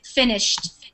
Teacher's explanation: It's more of a D sound, but finished, it sounds like a T at the end